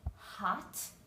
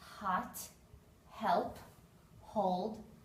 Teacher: H the expected sound is the sound hot and if you put your fingers on your throat you will notice there's no strong sound it's a voiceless consonant sound